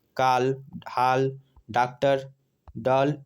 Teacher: यह आ और ओ के बीच की ध्वनि है। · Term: गृहीत ध्वनियाँ